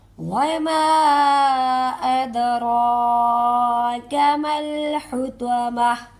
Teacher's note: وَمَا أَدْرَاكَ مَا الْحُطَمَةُ، نیکسٹ بھی وہی قاعدہ فالو کریں گے جو پیچھے ہوا ہے، تا گول ہے، اسے ہم ہا کی آواز نکالیں گے